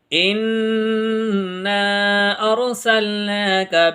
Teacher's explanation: یہاں ہم گننا کر کے پڑھیں گے یعنی ناک میں آواز گنگنا کے پڑھیں گے